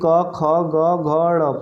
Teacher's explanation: तो जो क ख वाला है ना, जो क वर्ग है ये कंठ से निकलता है।